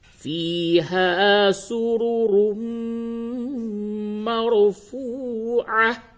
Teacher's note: اس جگہ پہ تنوین کے بعد میم ہے، ادغام مع الغنہ ہوگا